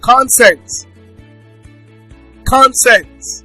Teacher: as a cons as a noun and also as a verb the noun is stressed on the first syllable while the verb is stressed on the second syllable